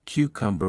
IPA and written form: ˈkjuːkʌmbər (Cucumber)